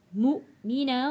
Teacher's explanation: حمزہ کے اوپر جزم ہے، جھٹکا دے کے پڑھیں گے